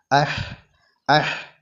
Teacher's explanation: തൊണ്ടയുടെ മധ്യത്തിൽ നിന്നാണ് ഹാ പുറപ്പെടുന്നത് ഹാ പറയുമ്പോൾ കാറ്റ് വരണം അതോടൊപ്പം തന്നെ ശബ്ദം നീളുകയും വേണം അഹ് അഹ്